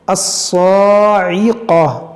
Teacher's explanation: اس صاد کو موٹا کریں گے کیونکہ حروف مستعلیہ ہے اور اس پر کھڑا زبر جو کھینچیں گے.